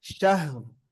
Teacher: நிறுத்தும்போது சுக்குன் வருது, அதுக்கு முன்னால ஃபத்ஹா வரனால வல்லினமாக ஓத வேண்டும். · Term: முஃபஹமா